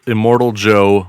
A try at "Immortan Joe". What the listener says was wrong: I know for a fact he's not Immortal Joe. it's Immortan Joe.